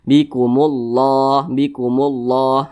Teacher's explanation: maka kalimat Allah dibaca tabkhim, dibaca tebal. Nah, maka ini ada kalimat Allah, di belakangnya ada huruf yang berbaris dhammah atau memiliki tanda baca dhammah, maka Allah dibaca tebal.